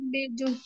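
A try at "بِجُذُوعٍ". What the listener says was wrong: তালের উপরে ওটা জজম, ঠিক আছে। জু হবে না আপু, ওটা জজম। বিজ। হ্যাঁ জজম ওটা।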